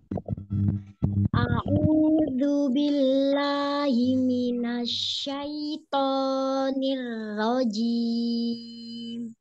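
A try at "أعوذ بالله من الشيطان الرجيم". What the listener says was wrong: Bilanya bagus tapi ainnya kurang. A'udzu billahi minasy syaithanir rajim.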